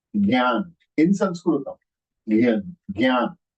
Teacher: It is Gyan. Because it is having Anunasika in that. Gyan. Gyan. It has a nasal effect.